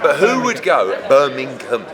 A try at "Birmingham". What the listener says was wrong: Birmingham. It's no, but you're missing a G. It's not a silent. It's not like you're saying knock it.